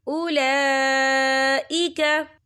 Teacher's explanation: ये देखिए उला, लाम के पर खड़ी हरकत है और इस पर मद भी है, ये मद जो है मद मुत्तसिल है, इसकी मिकदार 4 हरकत के बराबर है, तो हम इसे 4 हरकत के बराबर खींच के पढ़ेंगे।